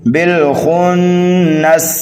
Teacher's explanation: سین کو سیٹی کی آواز دیں گے